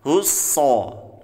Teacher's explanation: Allahus so. Nah, bertemu sod bertasydid, maka kita tekan husso. Ya. · ketika kita mengucapkan huruf sod, maka kita keluarkan dari ujung lidah, posisinya di tengah-tengah antara gigi seri atas dan gigi seri bawah